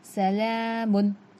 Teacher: मीम, दोनों होठों के सूखे हिस्से से अदा होता है। मीम के ऊपर दो पेश तनवीन, तनवीन में नून की आवाज़ होती है